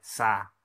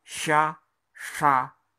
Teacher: Sa tipis, sha tebal